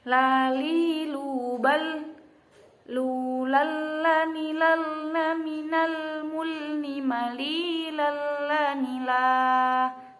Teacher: huruf lam ini makhrajnya yaitu sisi bagian depan lidah mengenai gusi gigi depan. Jadi lidah jangan sampai keluar tapi ya.